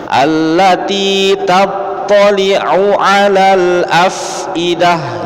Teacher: huruf fa-nya fa sukun, dia harus keluar angin ya. Caranya bibir bawah disatukan dengan gigi atas. Harus keluar angin.